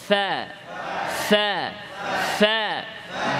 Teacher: নিচের ঠোঁটের ভেজা অংশ ভেতরের অংশ উপরের দাঁত ফ্যা নরম করে শক্ত না ফ্যা ফ্যা ফ্যা জোরে ফ্যা ফ্যা